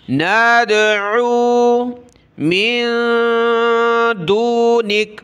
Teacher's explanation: نون دال زبر ناد، عین واو پیش عو، دال پر قلقلہ ہوا